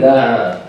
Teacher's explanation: The air goes there, and there's friction between the air and the epiglottis and the pharynx, or the back wall of the throat. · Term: fricatives